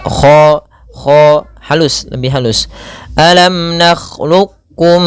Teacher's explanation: jangan sampai ada kha ya kayak bunyi seperti ngorok. Huruf kha itu tidak nakh, tapi dia mengalir suaranya.